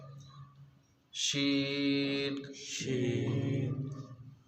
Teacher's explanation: شین، شین، زبان کا درمیان اور تالو کا درمیان۔